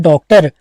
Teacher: यह आगत या विदेशी स्वर है इसे वृत्ताकार स्वर में गिना जाता है